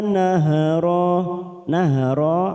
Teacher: ada fathah tanwin pada huruf ro karena dibaca waqaf maka kita panjangkan dua harakat